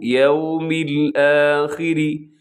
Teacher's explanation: وبالیوم میں کیا کرنا ہے آپ نے کہ ہونٹوں کو گول کرنا ہے، یو نہیں کر دینا بلکہ یوم الآخری، را باریک ہے، آخری میں را باریک ہے۔